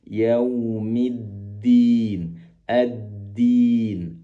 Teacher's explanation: Walaupun ada tasdid di situ, bukan berarti kita menebalkan dal yang bertasdid, tetap dia tipis walaupun dia bertasdid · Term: dal tipis